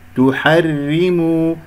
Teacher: ولا أقول تحرموا، لا أكرر، أو تحرموا تفخم، الراء مرققة